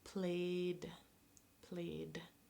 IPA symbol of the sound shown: d